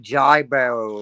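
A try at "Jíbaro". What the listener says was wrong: No, no, it's Hibaro, like with a H. Hibaro. just pronounce it with a H. Hibaro. Yeah, yeah, like Hibaro.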